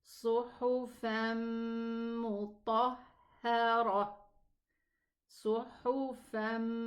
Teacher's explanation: 2 counts for the ghunna, and this is idgham.